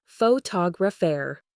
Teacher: in the word photographer, the stress falls heavily on the second syllable